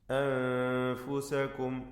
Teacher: സാക്കിന നൂൻ ഇഖ്ഫാ ഹഖീഖി നൽകി അവ്യക്തമാക്കി മണിക്കണം